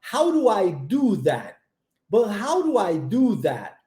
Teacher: Aqui nós temos o do igual mencionado na última aula também transformado em R